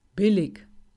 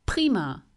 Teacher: Sprich die Wörter auf deine offene Hand. Das P erkennst du am starken Luftzug.